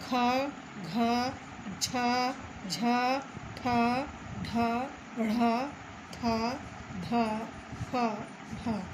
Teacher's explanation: इसके उच्चारण में फेफड़ों से बाहर निकलने वाली वायु की मात्रा अपेक्षाकृत अधिक होती है, यानी अल्प प्राण से अधिक होती है। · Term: महाप्राण